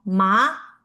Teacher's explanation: The second tone goes uphill